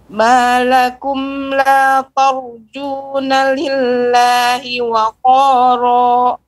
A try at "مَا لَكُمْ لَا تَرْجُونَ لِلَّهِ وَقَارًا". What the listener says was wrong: Ya, perhatikan ketika membaca tar jangan sampai berubah taknya berpengaruh, ya terpengaruh rok tebal. Jadi pengucapannya tor, yang benar tar. Malakum la tar dengan tor kan berbeda. Tar dulu, ta kemudian masukkan rok yang tebal.